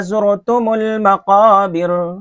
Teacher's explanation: را ساکن سے پہلے پیش ہے، اس لیے را کو پور پڑھیں گے. تم المقابر، مقابر میں جو را ہے اگر یہاں وقف کرتے ہیں تو مقابر کی را باریک ہے، اگر ملا کر کے پڑھتے ہیں مقابر کلا تو اس طرح پر پڑھی جائے گی.